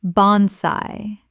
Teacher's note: Two syllables with the AI making an AY sound.